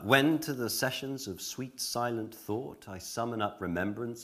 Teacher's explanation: R is pronounced after the vowel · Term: original pronunciation